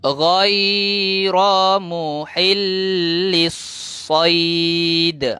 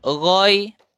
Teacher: Peti suara dah getar kat sini. Peti suara bergetar menyebabkan aliran udara ni dia tak laju. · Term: huruf ghin